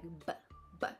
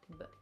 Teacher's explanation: in English it's a bit more explosive, like B, B. And in French it would be a bit more relaxed